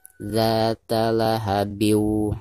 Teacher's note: Jadi suara tanwinnya itu harus dimasukkan ke huruf waw ya. Ini jika diwasolkan ya. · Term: idgham bigunah